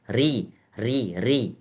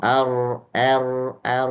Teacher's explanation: Huruf ro yang tebal tidak terdengar getaran yang banyak. Kalau tipis terdengar getaran. Misalnya ri ri itu terdengar getaran.